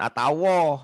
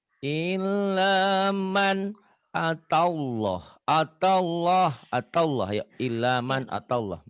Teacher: Atawlah. Akan ada W-nya, tapi W-nya jangan ditahan.